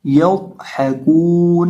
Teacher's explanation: قاد ساکن ہے تو یا قاد کے ساتھ ملا کر پڑھیں گے، اور قاد کو موٹا کریں گے